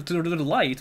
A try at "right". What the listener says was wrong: It's not a hard L. It's not a hard L in Japanese either.